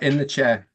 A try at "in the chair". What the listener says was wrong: it's not in the chair okay it's in the chair okay it's there's no R